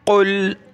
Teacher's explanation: क़ाफ को गले से निकालें मोटा करके। कुल, इसकी जगह आप छोटा काफ नहीं पढ़ेंगे, ये बड़ा काफ है, बड़ा काफ पढ़ेंगे।